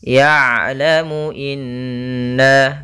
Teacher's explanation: Ain itu ada sifat namanya sifat bainiyah, tengah-tengah antara syiddah dan rakhawah, yaitu kalau syiddah suaranya tertahan, kalau rakhawah suara mengalir, tapi ain di antara kedua-duanya.